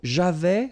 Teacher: final S not pronounced